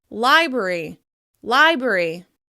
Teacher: library is commonly pronounced libry with just one /r/ sound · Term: haplology